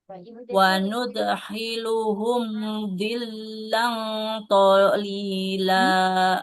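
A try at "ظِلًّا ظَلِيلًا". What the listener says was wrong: Bukan. Po, ada titiknya, Bu.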